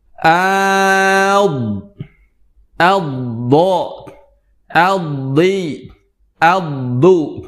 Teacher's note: Yang keempat adalah huruf dod yang keluar dari sisi lidah kita ataupun kedua lidah kita yang kita tempelkan ke gigi geraham atas